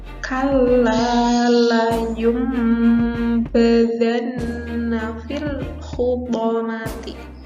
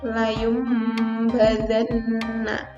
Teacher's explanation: Di mana tanwin atau nun matinya itu ketika ketemu dengan huruf b, maka tanwinnya itu akan diganti, tanwin atau nun matinya ini nanti diganti dengan huruf mim. Nah, nun matinya ini tanwinnya diganti dengan suara mim. Jadi cara membacanya kita harus merapatkan kedua bibirnya serta mendengung.